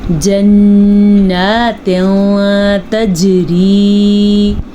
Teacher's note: نون کے اوپر شد ہے تو نون پہ غنہ ہوگا